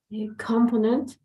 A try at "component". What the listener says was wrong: All right, so it's going to be instead of that one, you're going to put the stress here in the second O, like component, component. All right, component.